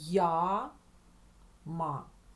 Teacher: я бачу одну букву але чую одразу два звуки й а